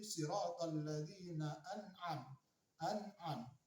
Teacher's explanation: Nun bertemu dengan ain. Cara membacanya adalah terang dan jelas di kerongkongan. Tidak boleh samar-samar ataupun tidak boleh dengung.